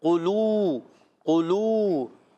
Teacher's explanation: قاف کو موٹا رکھنا ہے، قاف موٹے حروف میں سے، حروف مستعلیہ میں سے، قاف پر پیش ہے، لام پر بھی پیش ہے، ہونٹ گول ہو جائیں گے، واو ساکن پہلے پیش آ رہا ہے، واو مدہ ہوگا